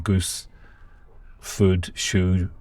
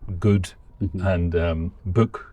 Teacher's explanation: So I've got the goose vowel in goose, food, shoe, but I've also got it in good and book